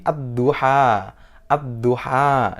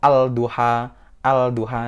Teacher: Alnya tidak terbaca. Tidak dibaca al-duha. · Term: idgham syamsiyah